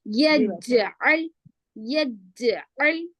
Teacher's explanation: یج قلقلہ کرنا، پھر عین لام زبر ال، جزم سکون. یج میں قلقلہ ہو رہا، عین لام زبر ال میں نہیں ہو رہا